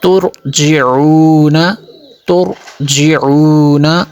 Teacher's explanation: را کو پر کریں گے کیونکہ را ساکن سے پہلے پیش ہے